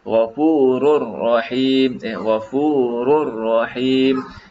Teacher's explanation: Di sini seolah-olah tanwin tu tak wujud. Yang wujudnya seolah dhammah. Dhammah kemudian dia terus masuk kepada huruf yang berikutnya. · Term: idgham bila gunnah